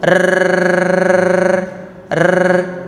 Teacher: getarnya itu tidak banyak jadi kalau r itu kan banyak getarnya kalau ro getarnya cukup sekali menempel sudah cukup getar sekali sudah cukup